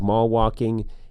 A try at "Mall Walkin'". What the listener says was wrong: Mall walk-in. You don't say the you don't say the G at the end. It's got an apostrophe.